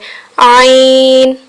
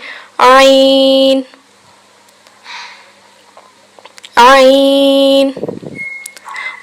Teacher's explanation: عین، حلق کے درمیان والے حصے سے۔ عین، نرمی سے ادا کیا جاتا ہے۔